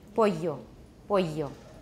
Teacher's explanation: And the examples they give here are from Castilian Spanish, that means the Spanish spoken in Spain, as opposed to Latin America. Because in Latin America, at least in most places, they pronounce double L like a Y